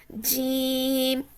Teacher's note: زبان کا بیچ والا حصہ اوپر بیچ کے تالو سے جب لگے تو جیم ادا ہوتا ہے